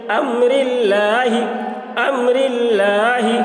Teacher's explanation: اللہ کے لام سے پہلے زیر ہے، اس لیے اللہ کے لام کو باریک پڑھیں گے. امرل، لام کھڑا زبر لا، لام کے اوپر کھڑا زبر ہے، کھڑا زبر برابر ہوتا ہے الف مدہ کے، اس لیے کھڑا زبر کو ایک الف کے برابر کھینچ کر پڑھیں گے.